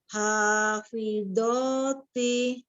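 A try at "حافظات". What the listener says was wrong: Hafidhoti. Yuk, tebalkan do-nya lagi Umi. Hafidhoti.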